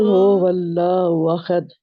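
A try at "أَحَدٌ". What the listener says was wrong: वही है, थोड़ी सी अहद, अहद, कुल हुवल्लाहु अहद, अहद। अहद में खा की तरफ जा रहा है आपका हा जो है, यानी दरमियान का गला, गले का दरमियानी हिस्सा जो है ना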